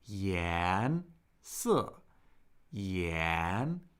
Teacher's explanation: can you hear the rising second tone